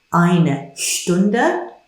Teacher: Remember the sh sound at the beginning